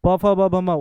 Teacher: प फ ब भ म ओष्ठ हो गया